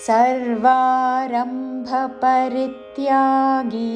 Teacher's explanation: రీ మీద ఆఘాతతో పరిత్యాగి చివరిలో గీ దీర్ఘము